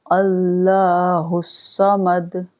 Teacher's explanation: کریں گے تو دال ساکن ہو جائے گا، پڑھیں گے سمد، صاد موٹا اور دال پر ساکن، دال پر قلقلہ ہوگا